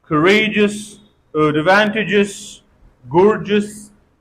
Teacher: Now, second sound, if the previous consonant is G. If we have GEOUS at the end, then this EOU is pronounced a, schwa sound.